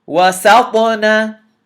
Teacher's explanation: The ta has to be bounced. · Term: qalqalah